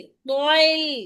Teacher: तो को मोटा करना है, लाम को नहीं।